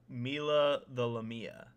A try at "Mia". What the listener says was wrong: Mia. There's no L in there.